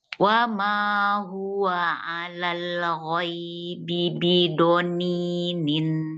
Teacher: do-nya dapat tapi tak panjang. Do-nya cuma 1 harokat.